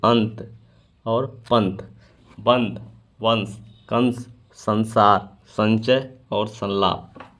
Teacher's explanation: त, थ, द, ध, र, ल, स और च के पहले वाले अनुस्वार का न के समान उच्चारण होता है